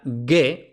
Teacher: el fonema G, pues se pronuncia G, oclusiva, otra vez después de pausa y en la secuencia NG